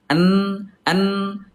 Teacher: Nun ada di gusi ya